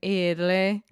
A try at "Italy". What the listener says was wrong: Id. No, id. So you're saying it with the D. Id. So id. O som do schwa. Li. Italy.